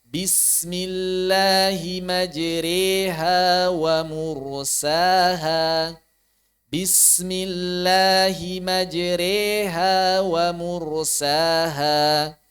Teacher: sukun sebelumnya kasrah maka ini dibaca tipis juga lidzi Hijr begitu kemudian ro imalah maka dibaca tipis juga